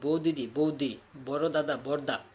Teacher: পাশাপাশি সম উচ্চারণে দুইটা ব্যঞ্জনধ্বনি থাকলে তারা একটা হয় একটা লোপ হয়, এরূপ লোপকে বলা হয় ধ্বনিচ্যুতি বা ব্যঞ্জনচ্যুতি।